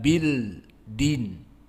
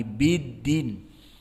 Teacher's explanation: setelahnya apa dan tidak Bil Din Tidak Bill Din tapi biddin maka di idgham kan karena dia Lam Syamsiah